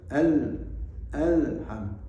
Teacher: lam itu memiliki sifat tawassut, agak mengalir sedikit. Jadi kita mengucapkan alhamdulillah harus alham, tidak boleh alham, harus alham.